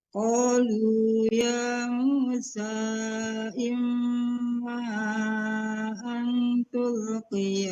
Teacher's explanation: Panjangin lagi ya, 4 harkat panjangnya.